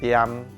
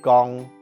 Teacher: 海陆腔调号二声的字，在念的时候，后面接任何字都会变调成中平调